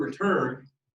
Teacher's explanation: so in the word return the stress part is turn